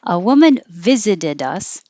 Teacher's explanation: only the viz is stressed here